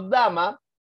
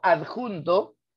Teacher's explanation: sucede que al momento de decir la D, el aire está saliendo un poco · Te explico, si yo digo dama, la D es oclusiva, ¿correcto? Porque suena y el aire no sale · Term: alófonos